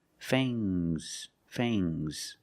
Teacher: Use a long a plus the nasal sound and a soft g.